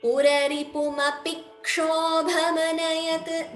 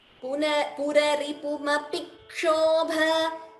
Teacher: You're getting that extra k sound, doubling. That is called dvitvam.